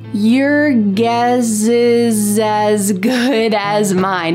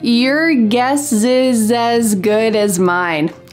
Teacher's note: in American English pronunciation, we often link the S with the vowel next to make a Z sound